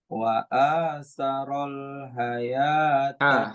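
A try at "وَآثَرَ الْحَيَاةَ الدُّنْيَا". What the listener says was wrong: Ha. Pakai ha kecil.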